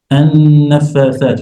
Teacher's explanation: You have a noon mushaddadah. Then you need to double the ghunnah to make it clear.